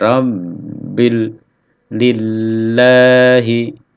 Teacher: Rabbil ada penekanan lalu ditahan.